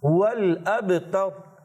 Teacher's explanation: را کو موٹا پڑھیں گے, تا کو باریک رکھیں گے, اور با میں کلکلا بھی کریں گے